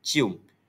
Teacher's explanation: Pertama adalah diftong bagi perkataan cium. Cium berbunyi-bunyi e dan u masih boleh dengar perbezaannya walaupun cepat diucapkan